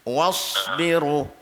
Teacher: Sad ni dia ada lajak angin dia sikit